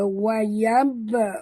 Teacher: dekat ba ada tanda sukun. Jadi kita kena lantunkan dia. Qalqalah sughra.